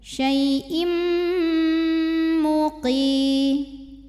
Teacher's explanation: Kemudian ada hukum idgham bil gunnah karena ada tanwin kasrah menghadapi huruf mim, maka tanwinnya masuk ke mim disertai dengung